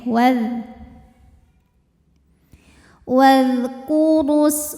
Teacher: Jadi walaupun depannya alif ini wau-nya tetap pendek ya, waz wazkuru, wazkuru huruf ra dibunyikan secara tafhim. Karena ra berbaris domah. Maka dibacanya tebal. Wazkuru, jika berhenti di ru hukumnya mad thabi'i dzahiri.